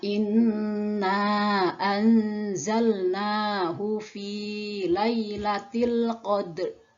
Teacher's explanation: akhir berharokat sedangkan huruf sebelumnya berharakat sukun maka cara membacanya adalah huruf terakhirnya disukunkan namun tidak dengan suara penuh yaitu dengan Setengah suara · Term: waqaf isyarat